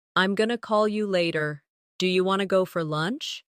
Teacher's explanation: In native conversation, pronunciation is also about reductions. Words like going to often become gonna. Want to becomes wanna.